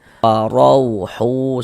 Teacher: huruf ra ini dibaca tebal, dibaca tabkhim sehingga pangkel lidah kita naik terangkat ke atas. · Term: dibaca tafkhim